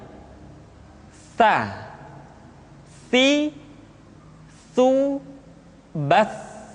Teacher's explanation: dikeluarkan dengan menyentuhkan ujung lidah kita dengan dinding dua gigi seri bagian atas diucapkan dengan suara dan nafas yang terdengar mengalir sa si su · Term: huruf tsa